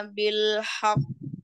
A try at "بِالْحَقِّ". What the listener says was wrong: Illa bil haqqi, haknya tidak tebal ya, tipis. Bil haqqi. Gak ikut tebal ya, haknya jadi.